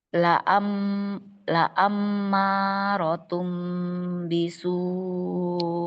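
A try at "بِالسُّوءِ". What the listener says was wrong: Bisu, tasdid sin.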